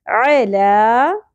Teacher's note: حلق سے باریک اواز کے ساتھ زبر کو زیادہ نہیں کھینچنا لام کے اوپر کھڑی زبر ہے ایک الف کے برابر کھینچیں گے